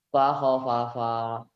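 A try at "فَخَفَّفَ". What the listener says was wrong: fakhafafa, nggak ada yang panjang ya. Fakhafafa.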